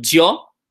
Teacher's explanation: Some countries will say a bit of a jia, like a kind of a JY combo, like got some weird action going there, like jo.